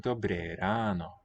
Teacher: a little more open A than I was doing